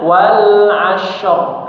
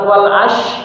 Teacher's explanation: huruf shad bukan huruf syin yang nempel yang naik ke atas pangkal lidahnya bukan tengah lidah. Kalau tengah lidah maka berubah jadi huruf syin pasti ya.